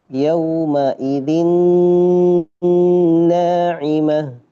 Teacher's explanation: Maka ketika bacanya harus masuk ke khayshum, harus masuk ke hidung. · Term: gunnah